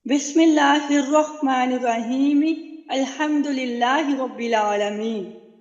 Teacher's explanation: جب ایک سانس سے پڑھیں گے تو یاد رکھیے جو بسم اللہ کی آخری جو حرکت ہے اس کو ادا کیا جائے گا، وہاں پہ وقف نہیں کریں گے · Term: وصل ثانی